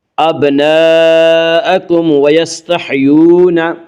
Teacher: یعنی میم کو ظاہر کر کے پڑھیں گے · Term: اظہار شفوی